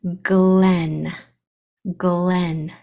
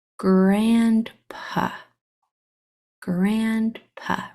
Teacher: the hard sound for G is that kicking motion from your the back of your tongue against the back of your throat it's a very quick fast hard sound she also makes the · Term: hard sound of G